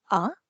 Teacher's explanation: second tone is from three to five · So the first one is 5/5, which is a flat one. And then the second tone is from 3 to 5. So it's like ah.